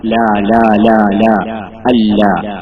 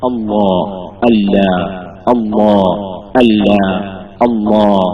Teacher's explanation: ഈ അല്ലാ എന്ന വാക്കിനെ നമ്മൾ തസ്ഹീമാക്കും